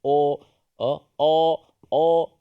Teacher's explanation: suara tebal kerana pangkal lidah kita terangkat o o o pangkal lidah kita terangkat sedikit keat atas menyebabkan